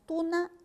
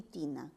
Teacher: ambas vocales son vocales altas Pero la diferencia está en que la primera es una vocal alta posterior ojo lo posterior en cambio la i es una vocal alta anterior